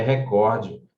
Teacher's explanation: a pronúncia correta é recorde ela é uma paroxítona